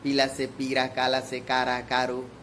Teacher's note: ऐसे भी अपने देहाती क्षेत्रों में ल को र ही बोलते हैं।